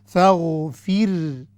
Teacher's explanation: یہ غین ہے، غین کو ہم نے موٹا کر کے پڑھنا ہے